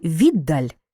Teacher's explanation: у слові віддаль д подовжений м'який знак це не звук тож маємо на два звуки менше